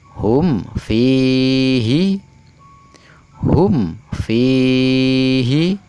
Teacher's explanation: Mim mati bertemu dengan huruf fa, tidak boleh dibaca dengung.